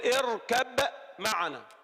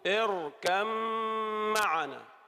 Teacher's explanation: نرى الباء أدغمت في الميم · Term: تجانس